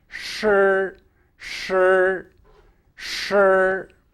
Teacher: The position for this syllable of the tongue position is one in which the tip is curled back and is slightly farther back than it would be in the case of the dental sibilants